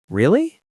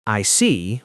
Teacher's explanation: For example, really with rising intonation shows surprise, but I see with falling intonation shows understanding.